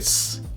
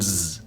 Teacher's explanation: between voiceless and voiced is to look at s and Z with s you can put your hand on your throat and not feel any vibration with Z on the other hand you do feel vibration · vibration with Z on the other hand you do feel vibration s is voiceless and Z is voiced